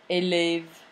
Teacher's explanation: It has two distinct vowel sounds. The sound e is closed and the sound e is open.